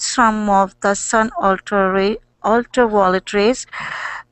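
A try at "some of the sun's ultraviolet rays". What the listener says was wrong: Well, you didn't get suns, the suns. So you said some of the suns, yes.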